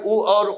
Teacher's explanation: इनका उच्चारण स्थान ओष्ठ है, ये ओष्ठ ध्वनियां हैं।